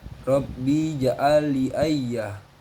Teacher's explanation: huruf ro dibaca tafkim sebab berharokat fathah, qalqalah sugro sebab huruf jim sukun asli, idgham mutamasilin sebab bertemu huruf lam dengan lam, mad jais munafasil sebab mat tabi'i bertemu alif pada kata yang lain, mad badal sebab alif berharokat fathah berdiri.